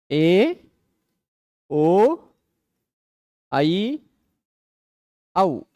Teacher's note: ए ओ ऐ औ चारों के उच्चारण स्थान में एक चीज कॉमन है वह है कंठ ठीक एका कंठ तालु ओ का कंठोष् ऐ कंठ तालु औ का कंठोष् चारों में कंठ कंठ है।